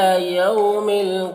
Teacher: यौम में वाउलीन से नरम आवाज़ के साथ जल्द पढ़ेंगे